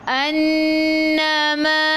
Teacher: nun ada sabdu wajib al-gunnah kena dengung 2 harakat.